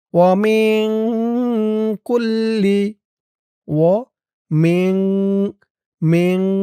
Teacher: ইকফা গুন্না নুন সাকিনের পরে ইকফার হরফ কাফ।